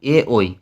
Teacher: কণ্ঠ তালব্য ধ্বনি অর্থাৎ কন্ঠ ও তালুর সাহায্যে উচ্চারিত হয় যে ধ্বনিগুলি